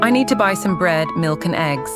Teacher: The pitch goes up on bread, up on milk, and then down on eggs.